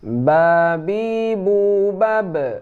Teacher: ba ini dempet antara bibir atas dan bibir bawah.